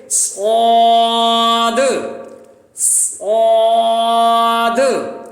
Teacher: सीटी सख्ती भी होगी, लेकिन इसकी एक और सिफ्त है मोटा पढ़े जाने की, उस सिफ्त को भी हम मद्देनजर रखेंगे।